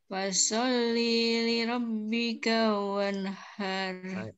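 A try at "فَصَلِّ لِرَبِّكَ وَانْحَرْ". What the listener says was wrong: Masih nyeret. Coba perhatikan. Fasol lili rob. Lili rob. Fasol lili rob bika. Jangan sampai jeda. Jangan sampai jeda.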